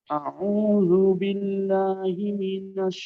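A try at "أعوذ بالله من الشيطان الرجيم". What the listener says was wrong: এখনো কিন্তু আইন সুন্দর হচ্ছে না।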